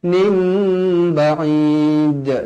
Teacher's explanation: iqlab dibaca dengan dua harakat